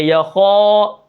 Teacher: اب یہاں پر آپ دیکھیں یا زبر یا، تو یا کو ہم نے بالکل نہیں کھینچنا، خا الف زبر خا. اب الف کے پیچھے کیا ہے، موٹا حرف ہے، تو ہم الف کو بھی کیا کریں گے، موٹا کر کے پڑھیں گے